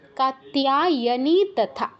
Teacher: এই তিয়া কাত্যায়া বা তেয়া এরকম কিছু বলবো না, কাত্তিয়া, তিয়া কাত্তিয়া, কাত্যায়নী তথা।